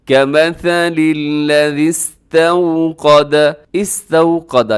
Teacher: یہاں پر واو لین ہے، واو سے پہلے زبر ہے تو اس کو نرمی کے ساتھ آپ نے پڑھنا ہے